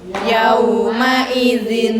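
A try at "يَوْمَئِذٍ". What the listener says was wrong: Zin. Ya, zin. Bukan den. Zin. Zin. Kalau kasroh itu kan nyengit. Ya, kalau kurang nyengit, nyengit berarti tambahin lagi khusus untuk ini gitu ya. Nah, namanya ada upaya biar jangan sampai yauma idzin.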